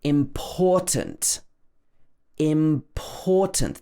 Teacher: This should be stressed on the second syllable